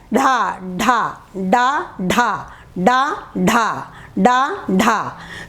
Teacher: जब उच्चारण करते हैं तो हमारी जीभ जो है आगे की ओर फेंक दी जाती है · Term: उत्क्षिप्त व्यंजन